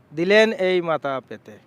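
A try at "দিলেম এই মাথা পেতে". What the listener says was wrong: দিলেম, দিলেন না দিলেম।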